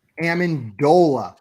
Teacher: Amendola, with the emphasis on the dole, baby. Everything else is not going to be emphasized in that name, and it does not start with an A.